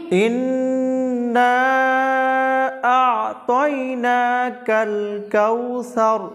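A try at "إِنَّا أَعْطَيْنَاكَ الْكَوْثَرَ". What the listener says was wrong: ভুল হলো, ইনে গুন্না হবে, নুনের উপর তাসদীদ দিলে ওয়াজিব গুন্না।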